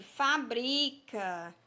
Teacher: qual é a sílaba tônica? É o bri. Nós pronunciamos com mais tonicidade.